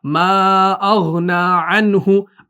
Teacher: نون ساکن کے بعد ہا آ رہا ہے حروف حلقی میں سے، تو یہاں پر اظہار کرنا ہے، نون کو ظاہر کرنا ہے